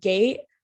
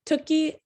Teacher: it shows how the velar and palatal sounds are turned into those alveolar sounds. So the K is turned into a T, the K for T, and the G for D, and the Ng for the N, and then so on.